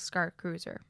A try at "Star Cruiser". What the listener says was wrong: Sounded like Scar Cruiser.